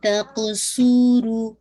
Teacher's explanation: صاد heavy رکھے گا قاف پہ قلقلہ رو کو 2 کاؤنٹ